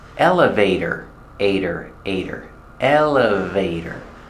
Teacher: Put the stress on the first syllable, elevator. And the T is pronounced as a fast D.